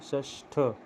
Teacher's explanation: श के बाद थ है तो थ को ठ में बदल देंगे